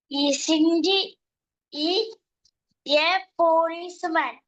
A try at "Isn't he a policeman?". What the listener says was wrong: Isn't he a policeman? ചോദ്യം ചോദിക്കുമ്പോ ആ ചോദ്യത്തിന്റെ ശൈലി, ആ ഒരു ടോൺ ഉണ്ടല്ലോ, ഒരു ശൈലി ഇങ്ങോട്ട് വേണം. Isn't he a policeman?